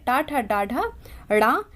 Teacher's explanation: तो मूर्धा है। जो हमारे जीभ का ऊपर का स्थान होता है, जहां हमारी जिह्वा टकराती है, उसे मूर्धा कहते हैं।